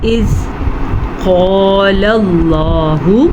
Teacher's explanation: قاف کو موٹا پڑھنا ہے، الف مدہ کے ساتھ پڑھنا ہے، اور لفظ اللہ کو ہم نے پر پڑھنا ہے۔